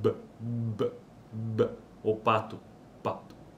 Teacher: aqui o ar está sendo obstruído nesse caso é bilabial né pelos lábios